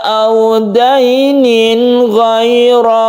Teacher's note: kita baca jelas dan terang kita sebut dengan izhar halqi karena ghain ini juga hurufnya itu makhrajnya tempat keluarnya ada di halqi atau tenggorokan